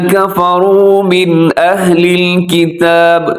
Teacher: من اہل میں غنہ نہیں کرنا, آپ نے اظہار ہو رہا ہے, من تیزی سے پڑھ جانا ہے.